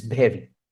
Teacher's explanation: the sound va in very, va is missing. And that is somehow mentally compensated with bha, which is present in the sound inventory of Bangla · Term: Bengali accent